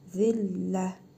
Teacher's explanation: tə hərfini hə hərfi kimi, hı kimi tələffüz edirik